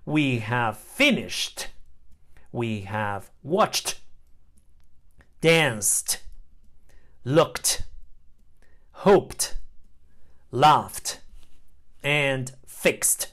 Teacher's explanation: final e d is pronounced T after all voiceless sounds voiceless sounds are made by pushing air through your mouth no